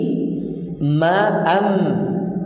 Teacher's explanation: Pertemuannya antara kedua bibir dalam keadaan tertutup disertai dengan gunnah yang keluar dari khayshum, yaitu huruf mim